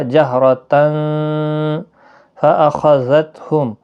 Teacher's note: جہرتن را پر پڑھا جائے گا زبر کی وجہ سے۔ تنوین کے بعد حروف اقفا کا فا آیا ہے، اقفا حقیقی ہوگا